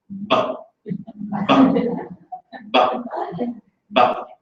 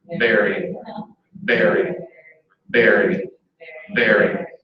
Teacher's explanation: So if you hold your upper lip, now your upper lip can't come down and touch the lower lip, and it doesn't become a bilabial stop, but it remains a labiodental fricative